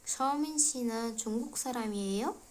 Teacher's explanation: Agar oxirida so'roq qo'yilsa va yeyodagi yo qismi jarangdor shaklda, ya'ni jarangdor tovushda aytiladigan bo'lsa, bu so'roq gap hisoblanib qoladi.